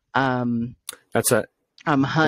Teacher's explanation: kind of like dropping off the G in ing words